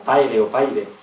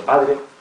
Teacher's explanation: la vocalización de la d ante r como paire o paire en lugar de padre